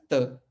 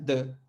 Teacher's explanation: जब भी कोई रेट्रोफ्लेक्स साउंड होगा, जब भी कोई ट ठ ड ढ अड़ वाले साउंड होंगे, वो पुर्तगाली में किस में बदल जाएंगे, दंत में बदल जाएंगे